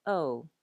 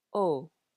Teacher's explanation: Do you hear that these are very pure sounds to the vowels with no diphthongs or gliding? Compare how we say in English, O, versus the very open Hawaiian, O. If you're familiar with Spanish or Italian, it's a very similar vowel sound.